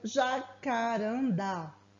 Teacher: com atenção ao o posicionamento das palavras exemplo a palavra Jacarandá a sílaba tônica é a última o da nesse caso nós temos aí uma palavra oxítona outro